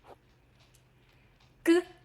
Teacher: Mandarin G is not like the G in go in English. English G has a buzz in your throat. Mandarin G doesn't. Instead, think of the K in sky.